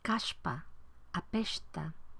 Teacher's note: La palatalización de la S se encuentra en hablas populares de Oaxaca y sobre todo se produce cuando la S va ante P, T o K.